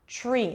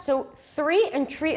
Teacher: The secret here is to connect the T and the R, and then it turns into a ch sound.